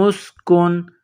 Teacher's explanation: نون ساکن کے بعد حمزہ ہے تو یہاں آواز ناک میں نہیں چھپائیں گے